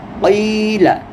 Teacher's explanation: قاف کو موٹا کرنا ہے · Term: موٹا حرف